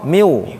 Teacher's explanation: Pertama minnya hilang, masuk waw, miu. Ditahan, miu.